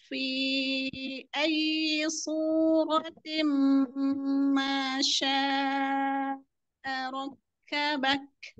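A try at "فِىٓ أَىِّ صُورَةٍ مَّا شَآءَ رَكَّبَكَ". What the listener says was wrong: Ronya tambah lagi. Ro.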